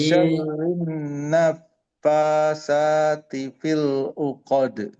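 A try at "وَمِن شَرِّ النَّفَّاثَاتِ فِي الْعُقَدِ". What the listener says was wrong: kurang samar ya. Wa min jangan jelas nunnya. Kurang ngalir fa-nya naf. Nah, udaranya terembus wa min pertahankan gunanya di nun. Syarrin ditahan dulu. Syarrin naffatsati fil 'uqad.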